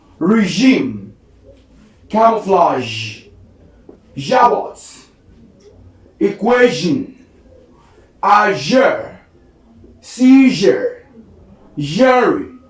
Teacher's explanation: The next one we have here is zh, a voice post alveolar fricative.